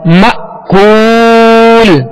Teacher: حمزہ ساکنہ میں جھٹکا دینا ہے